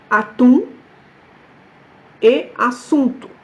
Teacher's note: Donc, encore une fois, le M et le N, ça fait nasaliser le son précédent. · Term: OU nasal